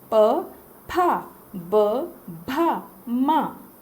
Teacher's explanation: सभी अक्षरों में आपके होंठ सट रहे हैं। अंदर में थोड़ा थोड़ा दांत, थोड़ा जीभ, थोड़ा दंत, तालु, सभी पार्टों का यूज़ हो रहा है, किंतु जो ये होंठ हैं इस वर्ग में सबसे ज़्यादा यूज़ हो रहे हैं। · आपके दोनों होंठ सटते हैं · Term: पा वर्ग